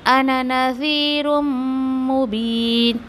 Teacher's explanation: मीम मुशद्दा पे भी गुन्ना करना है आपको